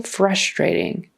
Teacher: In America, we put the accent on the first syllable.